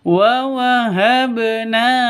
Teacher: cara bacanya dipantulkan ke huruf ba-nya ke huruf qalqalahnya · Wa wahabna ba mati ya, ba mati harus dipantulkan. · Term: qalqalah sugro